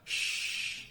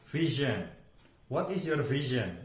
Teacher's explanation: Nah, walaupun bunyinya juga kita bisa mendengarkan secara satuan sh, tetapi di dalam vokal chord, vokal track kita itu tidak ada getaran. Sh, itu tidak ada getaran. Sehingga itu adalah voiceless. Berbeda dengan vision.